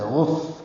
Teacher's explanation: غف ہلکی سی سانس کی آواز جاری رہے گی. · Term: حمز